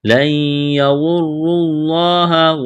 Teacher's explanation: نون ساکن کے بعد یا ہے، یہاں پر ادغام کریں گے، غنہ کریں گے. لَن يَضُرُّوا اللَّهَ، واو اور را کو موٹا کرنا ہے، لفظ اللہ کے نام سے پہلے پیش ہے، لفظ اللہ کے نام کو موٹا کرنا ہے.